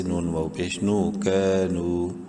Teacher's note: نون کو بھی ایک الف برابر لمبا کریں گے، واو مدہ کی وجہ سے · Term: الف مدہ